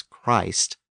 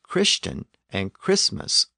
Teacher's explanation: we pronounce the name with a long vowel as Christ but we pronounce the words Christian and Christmas with a short vowel